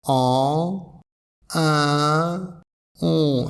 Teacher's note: Les mâchoires sont légèrement plus resserrées avec la voyelle on. Donc la plus ouverte, c'est la voyelle en. La voyelle 1, légèrement plus resserrée, et la voyelle on, encore légèrement plus resserrée. Donc c'est des très petites différences, c'est pas beaucoup.